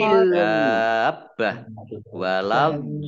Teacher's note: Dabbah ini namanya mat lazim musaqqal kilmi. Dibaca panjang 6 harokat. Tidak boleh kurang